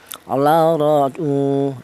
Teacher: ini dibaca tafhim atau dibaca tebal yaitu menggunakan lidah bagian belakang diangkat ke atas ya ro seperti itu.